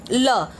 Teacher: जब हम लोग ल का उच्चारण करते हैं तो जीभ की जो नोक है वो मुंह के एक ओर या दोनों ओर पार्श्व मतलब छूती है। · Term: पार्श्विक व्यंजन